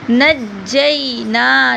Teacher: نون کو تھوڑا سا لمبا کریں گے، زبر کے بعد الف آ رہا ہے